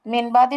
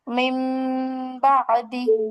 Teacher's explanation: যদি নুন সাকিন বা তানবিনের পরে বা আসে, তখন উক্ত নুন সাকিন বা তানবিনকে মিম দিয়ে গুণনা করে পড়তে হবে। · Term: ইকলাব